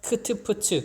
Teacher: 크 하면 크트프츠 공기 양이 가장 많이 나옵니다. 기식의 양이 가장 많죠. 그래서 유기음이라고 합니다.